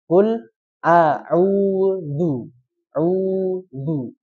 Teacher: Qul auzu Nah, jadi di sini memanjangkan U-nya dulu. Memanjangkan U-nya dulu baru tarik. Jadi jangan langsung ditarik ya.